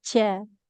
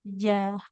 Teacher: Hati-hati dia tidak boleh berhembus udaranya